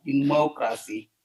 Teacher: in terms of the word democracy, so then we see that the stress is in the second syllable